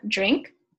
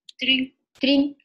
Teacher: I determined it to be a light l instead of a rhotic